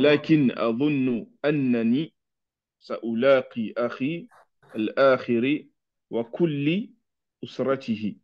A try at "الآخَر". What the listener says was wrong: non, là, c'est pas الآخري. Donc, c'est سألاقي أخي الآخر déjà. Déjà, ce sera A, la une fatha sur le ra, parce que je vais rencontrer mon frère, mon autre frère.